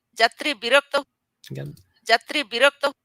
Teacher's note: So in this word birokta, we see that the rok has a closed syllable and would be expected to be heavier, and yet it's the bi that has the low tone.